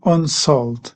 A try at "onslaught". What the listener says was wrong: Almost. So the on bit is right. It's the slaught bit. So onslaught, onslaught. That those animals have to be slaughtered. And the word they use is slaughter.